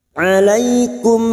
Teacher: Alaikum fathah bertemu ya sukun, huruf lain kita lunakkan. Alaikum, mim sukun bertemu hamzah, idhar safawi, mim sukun dibaca jelas tanpa mendengung.